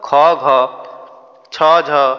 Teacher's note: মহাপ্রাণ বায়ু মানে কোন অধিক বায়ু নির্গত হইতো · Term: মহাপ্রাণ ব্যঞ্জন